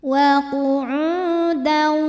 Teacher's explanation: Qiyamau wa matobi'i dhahiri, sebab ada waw sukun yang sebelumnya baris dhammah. Maka huruf ain kita panjangkan 2 harokat.